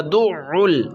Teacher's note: جہاں سے ہم الٹی کرتے ہیں وہیں سے عین نکلتا ہے